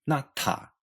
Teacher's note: pronounced natta, with an aspirated ta at the end